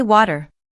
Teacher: The flapped T app appears when a T sound is placed between two vowel sounds. In American English, that T often softens and starts to sound more like a quick D. It's not a hard D, and it's definitely not a clear T either. · In American English, most people don't say water with a crisp T. They say water.